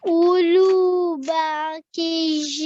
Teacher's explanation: make sure that we have a nasal sound at the end here with the tanveen as well